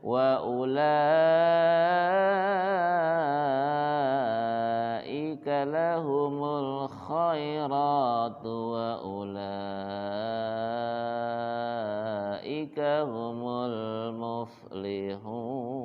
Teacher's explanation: Perhatikan itu mad wajib putus, jadi 5 harkat ya.